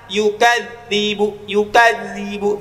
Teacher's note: Ya, ada huruf zal. Zal dia ngalir bunyinya rokhawah.